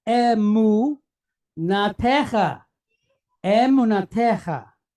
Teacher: we have this KH sound with a kamatz, long duration A on the inside, cha. So the word is emunatecha, emunatecha, right?